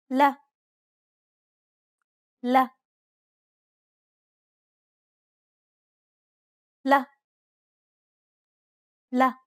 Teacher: Unlike the English L, however, the tongue is straighter in Arabic.